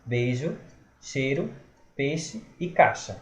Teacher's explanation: A gente come o I, essa semivogal que aparece.